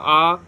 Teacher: विवृत्त जिसके उच्चारण में मुंह ज्यादा खुला होता है।